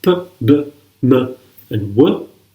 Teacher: bilabial are produced by using both lips. That produces the sounds p, b, m, and w.